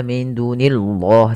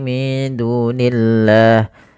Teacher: pada lafal Allah ketika dia didahului dengan kasrah tidak boleh dibaca tebal lamnya